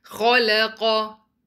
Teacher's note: Kha is heavy, lam is light, and qaf is heavy. Make sure your lam remains light.